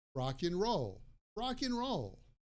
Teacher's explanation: Usually in everyday spoken English, and is pronounced like an or just the N sound. So if I say that I like rock and roll, I would normally pronounce that as rock and roll, rock and roll.